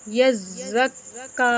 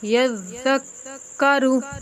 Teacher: ذال کو پڑھتے وقت آپ نے اپنی زبان کا سرا سامنے والے دو دانت کے کناروں کے ساتھ لگانا ہے